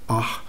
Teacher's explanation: Se pronuncia aspirado al final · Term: Tamarbuta